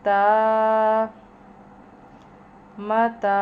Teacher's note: یہاں پر میم پر پڑی زبر ہے، یعنی زبر ہے، اس کو لمبا نہیں کریں گے. تا پہ زبر ہے مگر آگے الف آ رہا ہے، تو حروف مدہ کے رول سے اس کو ایک الف کے برابر لمبا کریں گے یا کھینچ کے پڑھیں گے.